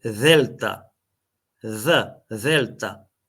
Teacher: не ја изговараме како нашиот звучен дентален експлозив, забен експлозив Д, ами на ист начин ставаме здив и изговараме the. Значи, како англиското that.